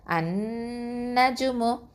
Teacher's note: அன்னஜுமு ஒரு அலிஃப் அளவுக்கு மூக்கில் சப்தத்தை நிறுத்தி வச்சு சொல்லணும் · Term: அக்கமல் குன்னா